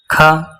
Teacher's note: ख कंठ महाप्राण अघोष